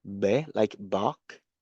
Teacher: it is unaspirated, meaning you can't feel a very strong puff of air coming through. So if you put your hand in front of your mouth when you pronounce the letter B, B, like bark, you can't feel any puff of air coming through.